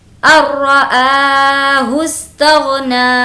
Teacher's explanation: ار، اور را کو موٹا پڑھنا ہے، ار رآ، الرآہ استغنی، ہا کو سین سے ملائیں گے ، الرآہ استغنی، کھینچ کر پڑھیں گے کیونکہ کھڑا زبر ہے،